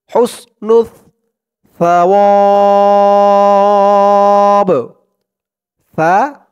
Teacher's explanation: উচ্চারণটা একদম নরম পাতলা করতে হবে, জিহ্বার মাথা ওপরের দাঁতের মাথার সাথে লাগবে সার উচ্চারণটা করার সময়